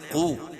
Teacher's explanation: قاف کو بھی پر پڑھیں گے، اور واو ساکن سے پہلے قاف کے اوپر پیش ہے تو وہ مدہ ہوگا